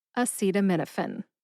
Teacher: Emphasize seat and min. Min gets slightly more emphasis.